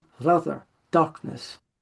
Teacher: for him those A's would have been short so it would be rather darkness they wouldn't be prolonged